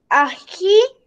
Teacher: Tienen la sílaba tónica en la última sílaba. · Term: Palabras agudas